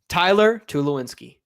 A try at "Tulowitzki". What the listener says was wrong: Can't pronounce my last name, but you're more willing to say it than Taylor's. There's no N in my last name, but that's all right.